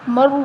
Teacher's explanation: اور یہاں واو مدہ ہے، واو ساکن سے پہلے پیش ہے تو واو مدہ، اس کو بھی ایک الف کے برابر لمبا کریں گے